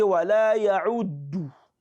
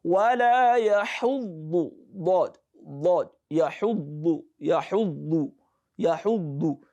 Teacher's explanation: you'll be pronouncing ayn instead of ha. Then you'll be pronouncing dal instead of dhad.